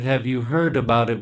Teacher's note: We stress heard. That's a verb. That's the word that carries the most meaning.